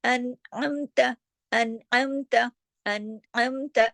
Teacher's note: عین کی آواز آپ کے گلے سے آنی چاہیے۔